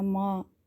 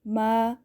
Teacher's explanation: نون غنہ کی آواز نہ آئے، صرف میم زبر الف ما